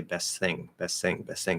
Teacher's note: now you're dropping the T and the TH and you're saying sing. · when you have ST at the end of a word, the T disappears. · the S going to a voiceless TH, the S can sort of take over and say best thing, best thing, best thing.